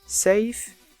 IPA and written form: seɪf (safe)